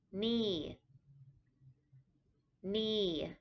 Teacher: It is a falling tone. So it starts off higher and then comes down like you're falling off a cliff.